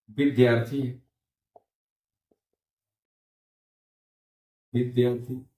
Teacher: दीर्घ आ और ह्रस्व आ मिलाकर हमारा दीर्घ आ हो गया।